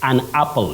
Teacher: know what we have the letter is a by name but the sound that it takes is what we technically or linguistically call the short low front sound a